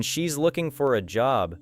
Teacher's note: The word for may become softer because the main meaning is looking and job.